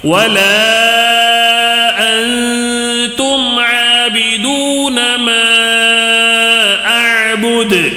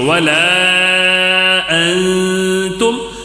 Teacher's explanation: یہاں پہ ولا اس کو تھوڑا کھینچنا ہے، مد یہاں پہ مد منفصل ہے، اس کو کھینچنا ہے، 3 الف 4 الف تک کھینچو